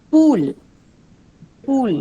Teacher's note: Monophthong. It's a pure vowel and it's a long oo.